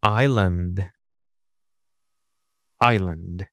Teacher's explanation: the underline a is in the weak syllable because the stress syllable is I